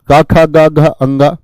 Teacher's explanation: क वर्ग वाले जो होते हैं यह कंठ से बोले जाते हैं कहां से इनका जो उच्चारण होता है व कंठ से होता